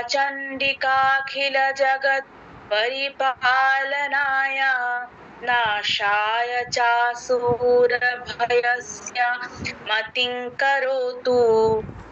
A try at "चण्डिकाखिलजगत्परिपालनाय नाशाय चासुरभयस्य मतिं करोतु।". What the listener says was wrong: বাহ, খুব সুন্দর হয়েছে, তবে চেষ্টা করবেন ওই কোথাও কোথাও যে থেমে যাচ্ছেন, একটু একটু মাঝখানে চাসুরা ভয়াস্য বলে একটু থামলেন, তারপর মতিং করোতু বললেন, ওই থামাটা যেন না হয়। এমনিতে উচ্চারণ ঠিক আছে, সুরও ঠিক আছে, যেন একটাই সমস্যা যে মাঝে মাঝে যেন না থেমে যান, তাহলে ছন্দটা কেটে যায়। আর এখানে শ্বাস গ্রহণের বিধি হচ্ছে আপনার একদম একটা পাদ শেষ করে তারপর মাঝখানে শ্বাস গ্রহণ করা যাবে না, তো এটা একটু খেয়াল রাখবেন।